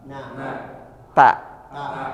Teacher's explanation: pengucapan hurufnya disertai menjauhnya lidah dari langit-langit atau terbuka dari langit-langit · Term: infitah